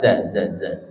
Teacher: za makhraj ujung lidah nyentuh gigi seri bawah, za. Sin za ya.